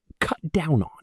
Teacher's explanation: the consonant sounds link right into the vowels of the prepositions